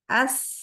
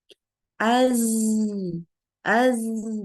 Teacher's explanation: untuk huruf Zai ini enggak keluar udaranya ketahan di dalam